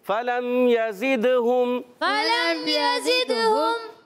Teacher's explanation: دال میں قلقلہ خوب واضح کریں گے